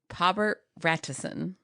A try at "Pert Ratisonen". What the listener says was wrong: Yeah, but you're saying Rat. Say it again.